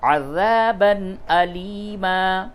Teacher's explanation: تنوین دو زبر ہے، تنوین کے بعد حمزہ ہے، اس جگہ پہ اظہار ہوگا